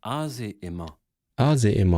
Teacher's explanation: the N with the nasal, N with the squiggly, is actually often gone. So Emma instead of Emman. And it's like the vowels sort of blend into each other as well.